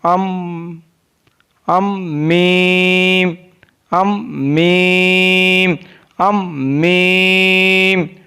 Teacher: Meem is pronounced from the dry part of both lips.